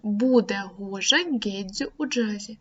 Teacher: Усі приголосні звуки в цьому реченні є дзвінкими. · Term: дзвінкі звуки